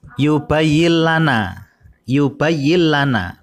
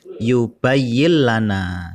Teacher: ada nun sukun bertemu dengan lam jadi bacanya langsung masuk dan tanpa ada dengungan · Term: bilagunnah